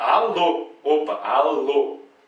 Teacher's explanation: A última é a mais forte, né? É uma palavra com duas sílabas. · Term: oxítona